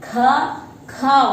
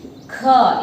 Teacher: When we start the letter, ka sound is coming and ending with ha. Ka and ha. These two sounds are hidden in this one. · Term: Mahapranakshar